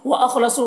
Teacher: खौ को पुर पढ़ेंगे, हुर्फ मुस्तारिया में से है। सौद को पुर पढ़ेंगे और यहाँ पर वाव मद्दा है, एक अलिफ के बराबर खींचेंगे।